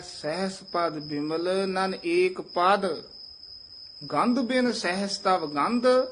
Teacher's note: ਹੈ ਸਹਸ ਪਦ ਬਿਮਲ ਨਨ ਏਕ ਪਦ ਇਥੇ ਪਹਿਲਾ ਵਿਸਰਾਮ ਹੈ ਸਹਸ ਪਦ ਪਦ ਪੋਲਾ ਬੋਲਣਾ ਹੈ ਬਿਮਲ ਤੇ ਠਮਕ ਲਾ ਦੇਣੀ ਹੈ